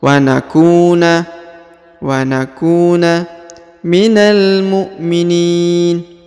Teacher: Huruf ku dipanjangkan 2 harokat karena di depannya terdapat waw sukun atau waw mati